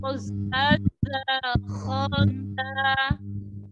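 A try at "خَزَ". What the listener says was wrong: Kho-nya dibuka yuk. Kho. Khoza. Za. Kho. Z, z, kurang lepas, kurang dorong.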